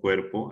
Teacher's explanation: La mayor fuerza de voz está en la E. Por lo tanto, esa E núcleo silábico.